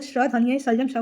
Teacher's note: जो श का उच्चारण किससे किया जाता है तो तालू से यानी तालव्य से किया जाता है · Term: तालव्य ध्वनि